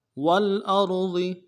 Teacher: ساکن غنہ نہیں ہوگا، حمزہ کو را کے ساتھ ملانا ہے، را کو موٹا کریں گے، ضاد کو موٹا ادا کریں گے